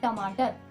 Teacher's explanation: तो टमाटर में आपकी जीभ जो है वो ट्विस्ट होके वही मूर्धा से जाके टकरा रही है, तो वही जहाँ पे वो टच कर रही है वही स्थान मूर्धा है।